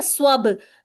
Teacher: बेस, बेस स्वब, बेस और स्वब, ठीक है, स्वब, बा पर कलकला करना है, रॉ को मुरक्कक करना है, मुरक्कक यानी कि पतला करना है